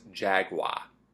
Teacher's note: an AR at the end of the word becomes a pure ah. In the accent tag videos I've watched, when the word jaguar comes up, it's almost always jaguar.